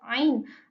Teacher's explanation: Ain ini berada di tenggorokan tengah berupa geseran dan ee majhur bersuara lalu tipis.